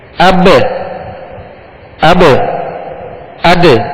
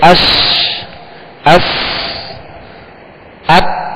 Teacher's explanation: قلقلہ کا معنی ہے جنبش، لوٹنا، اور حروف قلقلہ کو ادا کرتے ہوئے مخرج میں آواز لوٹتی ہے، لگ کر لوٹتی ہے